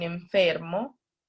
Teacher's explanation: ya no son los dos labios sino los labios y los dientes